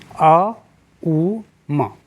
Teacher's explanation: ऊ जो है वो तालु से है, वो तालु से ही उच्चारण होता है। और म जो है ओष्ठ्य है, ओठ से ही निकलते हैं।